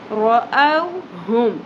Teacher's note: یہاں پہ واو حرف لین ہے، نرمی سے ادا ہوگا، او نہیں پڑھنا، یہ مجہول غلطی ہے ۔ رَأَوْهُمْ، ہا اقصی حلق سے، حلق کی گہرائی سے، حلق